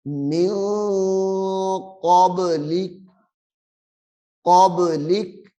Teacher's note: یہاں پہ غنہ ہے، اخفاء کا قاعدہ ہے، نون ساکن کے بعد حروف اخفاء آ رہا ہے، جس کی وجہ سے ہم غنہ کر رہے ہیں۔